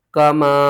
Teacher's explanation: چھوٹی مد ہے، 3 الف کے برابر کھینچ کر پڑھیں گے